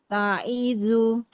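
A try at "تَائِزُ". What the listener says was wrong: Nah, sa ya. Taisu.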